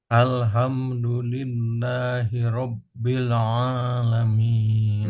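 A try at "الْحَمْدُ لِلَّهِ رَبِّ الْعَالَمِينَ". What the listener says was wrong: Masih kurang ditahan. Coba Bapak tahan satu harokat minimal. Rabbil alamin.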